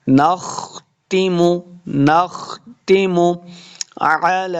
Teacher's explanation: خا کو موٹا پڑھنا ہے، نختم، نختم علی، دیکھیے لام کے اوپر کھڑی زبر ہے اور مد بھی ہے تو اس لیے ہم نے اس کو لمع کرنا ہے۔